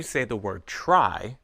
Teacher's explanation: your lips are round for the sound ra when you say try